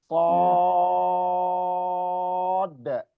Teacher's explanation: Sod. Panjang sampai 6 harokat, kemudian kolkolah.